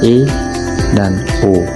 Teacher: Vokal sedang, lidah berada di posisi tengah, contohnya E dan O.